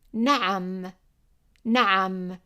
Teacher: And you see here that we have number 3, and remember that we used number 3 to represent the ayn, which is like a vowel, like pronouncing an English vowel while tightening the throat